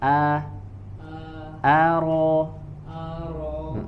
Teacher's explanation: Ro-nya tebal, a-nya tidak dibaca tebal.